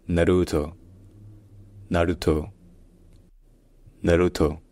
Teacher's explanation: le positionnement de la langue est comme un ou français mais où les lèvres sont non pas arrondies mais compressé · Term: le U japonais